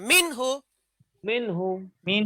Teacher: গুণ্না ছাড়া স্পষ্ট করে পড়তে হয়, এর নাম হচ্ছে ইজহার · আচ্ছা বামে হচ্ছে হা, হ্যাঁ 6 হরফে এক হরফ, গুণ্য হবে না, তাড়াতাড়ি হবে, স্পষ্ট হবে নুনটা